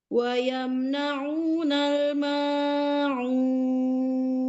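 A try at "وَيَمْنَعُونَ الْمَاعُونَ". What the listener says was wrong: Banyak kelebihan panjangnya.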